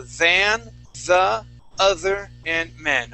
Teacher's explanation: make sure to pronounce that th. Get a good vibration on that those th sounds